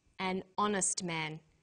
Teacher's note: The H is not pronounced, so honest sounds like it starts with a vowel.